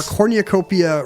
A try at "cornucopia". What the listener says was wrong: Did you just put an extra syllable in cornucopia? Yeah, cornucopia. I heard you say cornucopia. Like it's something like it's an optometrist holiday.